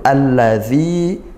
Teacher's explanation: zi kasrah diikuti ya sukun, dibaca panjang satu alif atau dua harokat